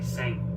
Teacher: when spoken, we don't pronounce the I usually, so we just say seng